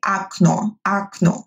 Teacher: In Russian, when the vowel is not stressed, we don't actually pronounce it as о. We will say it as а.